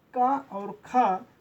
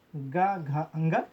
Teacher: का और खा अघोष, गा, घा, अंगा सघोष